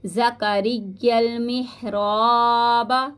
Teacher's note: یا کو لام کے ساتھ ملائیں گے